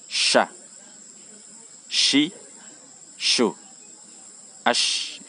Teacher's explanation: Ash, ini memiliki udara yang menyebar ya. Sha, dan tidak bersentuh dengan langit-langit.